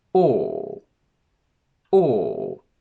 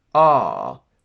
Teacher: a long mid-back sound which means that your jaw is more or less at its natural openness the back of your tongue goes up which causes your lips to be rounded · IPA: /ɔ:/